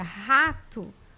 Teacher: R então se eu falar a palavra rato no início né ele vai ter esse som que sai lá da garganta som do H